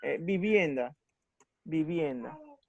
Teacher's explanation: En vivienda, la sílaba más fuerte sería bien, vivienda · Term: acento